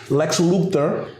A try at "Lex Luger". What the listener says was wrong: Lex Luger. You said Luther.